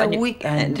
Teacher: so you've got that glottal going with a K